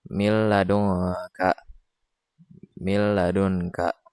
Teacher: Di antara huruf nun dan juga lam dimasukkan tanpa adanya dengung. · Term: idgham bila gunnah